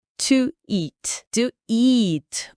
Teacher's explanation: O som I aqui é o mesmo i longo que a gente já viu em dream